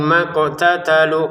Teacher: Qof-nya kita pantulkan ya